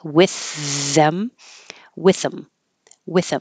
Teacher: we're using the voiceless TH from with instead of the voice TH in them.